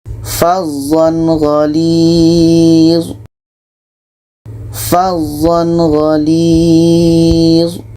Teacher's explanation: Bukan tanwin bertemu a, tapi tanwin bertemu gha, karena huruf yang berbaris adalah gha. Jadi ketika tanwin bertemu dengan gha, ini izhar halqi, tidak ada dengung, dan harus dibaca jelas. Tanwin jelas, gha jelas.